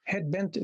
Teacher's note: Head bent, this is a spondee. Head bent, both of them receive this stress.